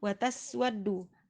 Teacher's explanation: Wataswaddu, ada sin sukun, jangan dipantulkan ya, cukup dipenuhi beberapa sifat yang dimiliki huruf sin, diantaranya hamas, rakhawah dan juga sofir ya, jadi desisannya terdengar jelas